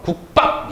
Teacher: 뒤에 소리 예사소리가 된소리로 교체되는 현상입니다. 어렵지 않죠? 그러니까 받침이 안울림 소리, 예사소리 이 5가지이고 뒤에 게 역시 똑같은 5가지일 때 이 예사소리가 된소리로 교체가 되는 거예요.